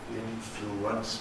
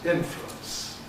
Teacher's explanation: the thank you vowel turns into a W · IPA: [ˈɪnfluəns]